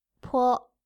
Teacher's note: You can try to put your hand in front of your mouth as you say these two sounds. You'll feel a strong puff of air as you say po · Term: aspirated